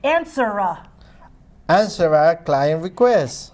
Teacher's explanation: Take the R and link it to the A